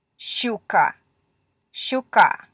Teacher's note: Okay, so it is as if you're saying a sh and then a really fast ch afterwards